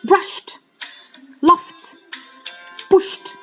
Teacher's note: T sound is used after an unvoiced sound